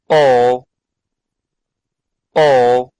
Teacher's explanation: the body of the tongue is positioned at the back of the mouth